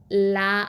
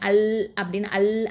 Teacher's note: 2 நாவோடைய 2 சைடுலேருந்து அப்படியே சப்தம் வந்து வெளியில் வரும் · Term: லாம்